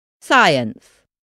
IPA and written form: ˈsaɪəns (Science)